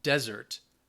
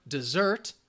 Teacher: The difference would be the emphasis, where that stress is. So the noun, desert, the stress is on the first syllable. The verb, desert, the stress is on the second syllable.